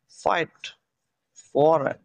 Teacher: উপরের ঠোঁটের সাথে নিচের ঠোঁটে স্পর্শ হবে